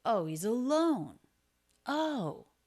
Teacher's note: part of how he shows that he's being sarcastic is that he puts a lot of pitch change in his voice